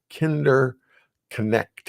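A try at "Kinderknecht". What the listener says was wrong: probably the K is silent. Kindernet.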